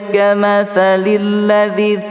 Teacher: Kamathalil ladzi makhrajul ka senyum. Kamathalil ladzi tha keluar ujung lidah sedikit makhrajulnya. Kemudian lilladzi juga ladzi lembut juga dzi ya mati di depannya mad asli panjangnya 2 harakah.